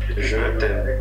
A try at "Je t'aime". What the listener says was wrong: It's too quick. Can you speak slowly?